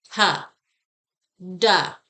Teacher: when we say we're adding a schwa we're actually adding a vowel sound and that is what's making the jaw move so much